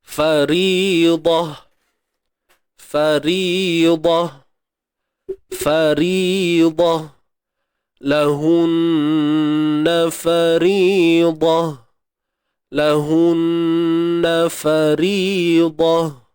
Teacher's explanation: Bukan ha pedas ha simpul biasa · Ta yang tertutup ni bila kita berhenti dia takkan jadi faridata. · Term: ta marbutah